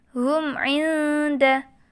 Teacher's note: ada mim sukun bertemu dengan ain, maka dibaca jelas tanpa mendengung. Ini dinamakan idhar syafawi.